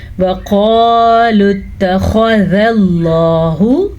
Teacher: خا کو بھی پر پڑھنا ہے، لفظ اللہ کو بھی پر پڑھنا ہے کیونکہ لفظ اللہ سے پہلے زبر ہے۔